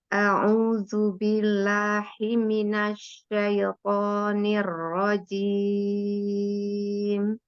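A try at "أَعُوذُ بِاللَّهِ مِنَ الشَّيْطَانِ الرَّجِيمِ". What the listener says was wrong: tadi kayak ada yang keputus billah gitu. Billah. Coba satu nafas lagi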